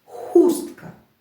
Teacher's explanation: наголос стоїть на перший голосний у хустка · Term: варіативний наголос